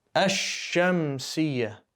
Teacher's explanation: We didn't say Al-Shamsiyya. We said Ash. Go straight from the alif to the next letter. Skip the lam. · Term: solar Al